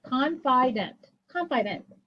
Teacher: would say to yourself well closed open close confident confident i even though it should be a long i sound because it's followed by that d it's a short i